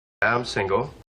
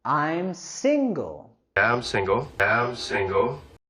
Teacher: Queremos subir la entonación en la primera sílaba de single.